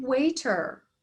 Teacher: of a funky a sound but notice in waiter notice that we don't hear the e we just hear the r